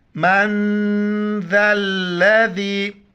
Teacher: نون ساکن ہے، ناک میں آواز چھپائیں گے اور ذال کے وقت زبان باہر نکالیں گے اور ذال کو